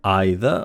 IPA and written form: ˈaɪ.ðə (either)